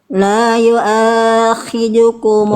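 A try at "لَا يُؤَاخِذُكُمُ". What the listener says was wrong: Kepanjangan A-nya. La yu'akhidu. La yu'akhi. 2 harokat aja.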